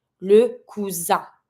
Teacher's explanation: because the S is between the U and the I, I'm going to be pronouncing it as a Z. Le cousin. I-N here, careful. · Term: Z sound